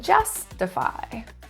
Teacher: Stress in the first syllable